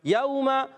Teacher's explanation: یوم، واو لین ہے، واو ساکن سے پہلے زبر آ رہا ہے، واو لین نرمی سے ادا کریں گے. یوم، میم کا مخرج دونوں ہونٹوں کا تر حصہ.